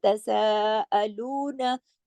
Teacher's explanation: सीन को खींचा क्योंकि उसके ऊपर मद है